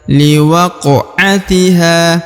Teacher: huruf q dibaca pantul ya karena dia berharakat Sukun dan huruf Q adalah salah satu daripada huruf-huruf pantul atau huruf-huruf Qalqalah